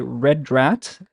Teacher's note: rat red rat now why is the roof sound happening because the tip of my tongue gets turned a little bit back it kind of it folds over itself a little bit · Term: rolled back tongue